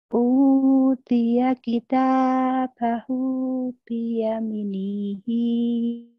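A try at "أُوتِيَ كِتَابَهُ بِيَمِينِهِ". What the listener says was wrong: Lagunya bukan gitu ya. Bukan. Utia kita bahu biyaminihi fayakulu. panjang. Biyami matobi ini. Mi-nya panjang. Biyaminihi fayakulu.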